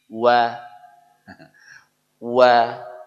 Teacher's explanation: Waw itu makhrajnya pada dua bibir. Jadi kalau mengucapkan wa itu bibir harus kerasa.